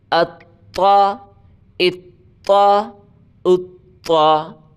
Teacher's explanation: اگلا لفظ دیکھیں، طا ہے، طا کو موٹا کر کے پڑھیں، زبان کی نوک اوپر کے تالو سے ٹچ کر کے پڑھیں سختی کے ساتھ